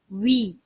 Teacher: கஸ்ராவுடைய நிலையிலயும் வாயை குவிச்சு வி இப்படி சொல்லணும் வி வி இப்படி தொறந்து பேசிடக்கூடாது அதாவது நம்முடைய பல்லு வந்து இப்படி உதட்டுல